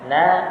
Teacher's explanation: Na, tidak ada angin yang keluar dari mulut kita.